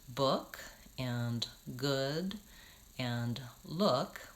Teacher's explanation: in the words book and good and look, we don't say an oo vowel. It's not look or good.